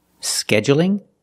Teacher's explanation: you can say scheduling with the stress on the first syllable